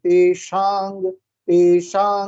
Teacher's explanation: शा आएगा, शा ऐसे आवाज आनी चाहिए, शा। इसको जब पढ़ते हैं तो ये मूर्धन्य शा होता है